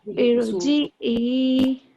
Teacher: را ساکن سے پہلے جب الف ہے تو اس را کو موٹا پڑھا جاتا ہے